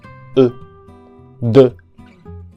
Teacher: Y en la palabra de tenemos a la vocal E, que diré en esta ocasión que es prácticamente como la E del español, pero con los labios redondeados